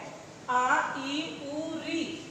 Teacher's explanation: दीर्घ स्वर जिनको बोलने के लिए दो मात्राओं का समय लगता है, दुगुना समय लगता है